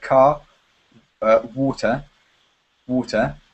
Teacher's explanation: in British English we don't pronounce the R